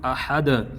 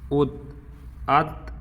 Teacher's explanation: اور دال ساکن جب ہوگا تو قلقلہ خوب ظاہر ہوگا